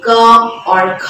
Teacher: इनको जब हम उच्चारित करते हैं तो सिर्फ और सिर्फ हमारे सांसों का ही प्रयोग करते हैं हम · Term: अघोष